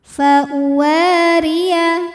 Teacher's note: Wa hukumnya mad tabi'i dhahiri karena ada alif didahului fathah. Maka wawu panjang 2 harokat.